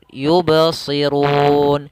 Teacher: Ba ketika qalqalah itu tidak putus